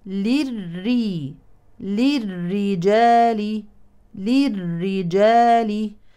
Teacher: ادغام كامل بدون غنه · ادغام شمسي مشدده بالكسر اذا مرققه